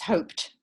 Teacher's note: if you say hope, it ends with a P, right? Which is a voiceless sound.